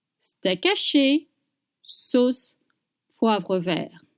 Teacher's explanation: you don't pronounce the T at the end of vert